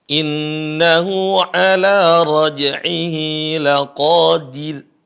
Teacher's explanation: Ra-nya dibaca tipis karena sebelumnya adalah kasrah.